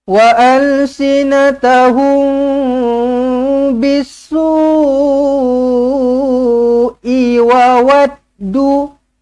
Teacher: mim kosong bertemu dengan ba, ikhfa syafawi, dengungkan dengan 2 harakat.